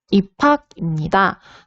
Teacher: 비읍과 히읗이 축약이 되어서 입학으로 발음되고 있는 것을 확인할 수가 있었습니다